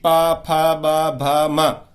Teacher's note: प फ ब भ म, इनका उच्चारण तो हम बिना ओष्ठ बंद किए कर ही नहीं सकते।